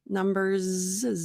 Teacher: so not s but Z in this case